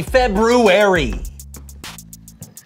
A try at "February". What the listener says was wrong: did you say February I know there's an R there but most people don't pronounce it